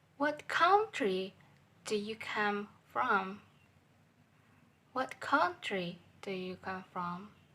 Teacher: Word what is a flat level is 2. Word country is high level is 3. And word from is low level is 1. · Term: falling intonation